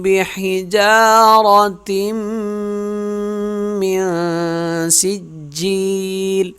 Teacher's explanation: بِحِجَارَةٍ یہاں ہوگا غنہ، تا میم سے مل جائے گا۔ بِحِجَارَةٍ جیم کو 1 الف کے برابر کھینچیں گے، را موٹی پڑھیں گے، وہ یہاں غنہ کریں گے۔